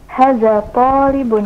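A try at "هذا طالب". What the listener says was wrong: Hanya panjangkan. Hadza talibun.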